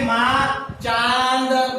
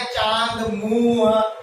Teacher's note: अनुनासिक के अंदर क्या होता है कि जब भी वर्णों का उच्चारण होता है तो इनकी ध्वनि मुख व नासिका से निकलती है, नाक से भी बाहर निकलती है और मुख के विभिन्न भागों को टच करते हुए बाहर निकलती है, जिसे हम अनुनासिक कहते हैं।